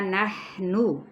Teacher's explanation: نون کی پیش کو کھینچیں گے نہیں